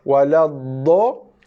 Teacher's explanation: Yang panjang itu 6 harakat tu bukannya bunyi dha tapi bunyi laluan udara yang lalu pada rongga leher sampai rongga mulut. Waladh 1 harakat stop habis itu je dha.